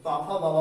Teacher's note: ओस्ट, पापा बाबा बोलते समय आपके ओस्ट पूरी तरह से ओठ बंद हो जाएंगे